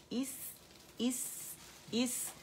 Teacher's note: سین پہ صفیر رخاوہ اور ہمس اور باریک